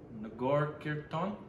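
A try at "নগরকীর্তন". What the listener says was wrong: That's it, phonetically, Nagarkirtan. Nagar, well, in Bengali, because it wouldn't be Nagar, it would be Nagar. Yeah, but there's more of a O sound on the A. Nagarkirtan.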